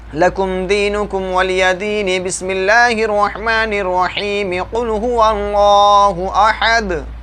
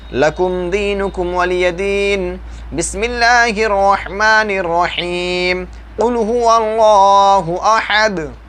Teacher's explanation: सूरह काफिरून के आखिरी आयत को अलग सांस में पढ़ दिए और बिस्मिल्लाह को अलग सांस में, और सूरह इखलास की पहली आयत को अलग सांस में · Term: फ़स्ल कुल